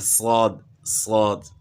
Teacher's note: سیٹی کی مثل آواز ہے